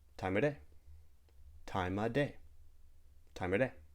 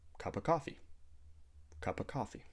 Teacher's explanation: other times we might delete the V sound in of